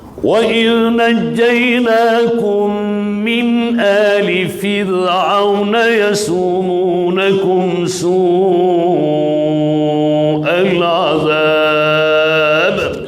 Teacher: Huruf ra' barisnya sakin asli, sebelumnya didahului oleh huruf yang berbaris kasrah. Maka ra' ini wajib dilafaz dengan tarqih. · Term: nipih